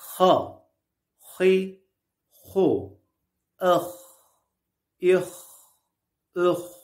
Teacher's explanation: boğazın üst kısmının sıkılması ile çıkar kalın bir harftir